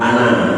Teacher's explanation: alif yang ada pada kalimat ana itu tidak boleh dibaca panjang